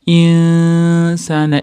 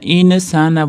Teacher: nun sga yo'liqib igfo boʻlyapti. Nonda sni chiqadigan joyga yashiramiz.